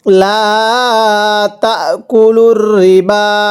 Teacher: এই বায়ের মধ্যে 3 আলিফ টান দিব। মদের হরফের উপর এই যে মদের হরফের উপর এই যে চিকন চিহ্ন, এরপরে লম্বা হামজা 3 আলিফ টানতে হবে।